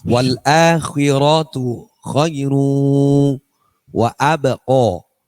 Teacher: Jadi ini tanwin yang ketemu wawu dibaca gunnah. Idgham bi gunnah.